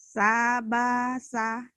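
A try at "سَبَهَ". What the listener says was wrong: Kenapa jadi sabasa? Ada aja Ibu mah. Sabaha kan bentuknya juga beda.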